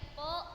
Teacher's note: એ પ અલ્પપ્રાણ ધ્વનિ છે, કેમ કે એ ધ્વનિના ઉચ્ચારણ વખતે નાદતંત્રી પાસેથી જે હવાનો જથ્થો પસાર થાય છે એ થોડા પ્રમાણની અંદર છે